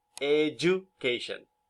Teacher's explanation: alveolar stop consonants become palatal before high back vowels · D plus U turns into J, as in education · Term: Palatalization